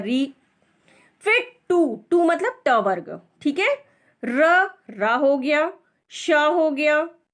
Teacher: ट वर्ग मतलब टू, ठीक है, फिर र और श का उच्चारण स्थान मूर्धा है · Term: मूर्धन्य